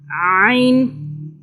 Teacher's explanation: عین کو حلق کی سائڈ سے آپ نے اس کو ادا کرنا ہے، اس کا مخرج حلق سے ادا ہوتا ہے